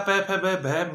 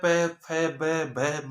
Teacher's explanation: जो होठ है उसके बिना प वर्ग को बोला जाना नामुमकिन है। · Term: ओष्ठीय